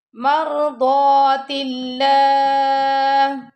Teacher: اب تا کے نیچے زیر آ رہی ہے تو اللہ کا جو لام ہے وہ باریک پڑا جائے گا